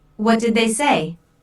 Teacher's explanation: notice how say is emphasized but the intonation Falls at the end of the word this is a what question so the intonation Falls at the